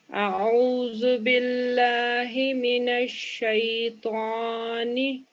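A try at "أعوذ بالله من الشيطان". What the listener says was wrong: अच्छा, त्वा में मिस्टेक होती है, हम राउंड लिप से पढ़ते हैं इसको। तेज ज़बर ता जिस तरह होता है ना, तेज ज़बर ता, उसी तरह तौ तौ कहना है। लिप्स हमारे राउंड नहीं होने चाहिए, ठीक है। लिप्स हमारे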